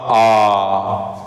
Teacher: जैसे ही हम लोगों ने आ बोला वैसे ही क्या होगा? पूरा मुंह खुल गया। तो विवृत मतलब बड़े आ में आ जाएगा।